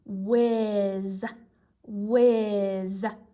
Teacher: when you hear the word whiz, you don't hear the H sound